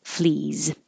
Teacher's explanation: um fleas is followed by is following a voiced sound e e is voiced so the S looks like an S but sounds like a z flees if your voice is on leave it on if your